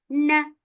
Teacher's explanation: for Fatha open your jaws, the sound is short.